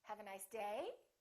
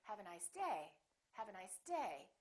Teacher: so my voice is still going down even though i'm stressing the word the pitch is still down